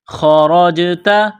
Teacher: خا اور را کو موٹا کرنا ہے. جیم ساکن ہے تو جیم پر قلقلہ کریں گے.